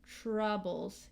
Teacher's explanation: So T before R has actually a CH sound.